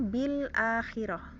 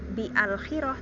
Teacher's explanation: maka secara penulisan Hamzah washolnya ditulis tapi secara pengucapan tidak dibaca